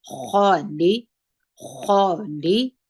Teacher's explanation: دغه ها به کوشش وکړئ چې اوازې د سینې څخه راوباسئ خا د درنو تورو څخه ده په ډکه خوله باندې وایو